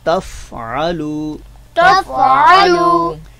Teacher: فا پر کوشش کرنی ہے کہ آواز میں جنبش نہ ہو, آواز جو ہے وہ ابھرے نہیں